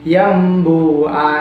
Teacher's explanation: Jadi tulisan aslinya itu anburika, tapi dibaca amburika seperti itu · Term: iqlab